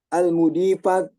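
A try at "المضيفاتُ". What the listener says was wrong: nah yang kurang kurang mendapatkan perhatian ya almudifatu gitu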